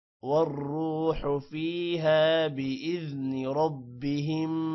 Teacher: ربہم را موٹا ہوگا اور میم پر غنہ ہے